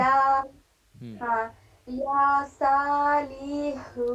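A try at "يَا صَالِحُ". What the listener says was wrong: جلدی لام کو جلدی پڑھیں گے، ہاں کو بھی جلدی. لام کو آپ کھینچ رہی ہیں. یا صالح.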